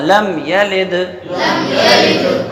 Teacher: دال کا مخرج کیا ہے؟ نوک زبان سامنے والے دانتوں کی جڑ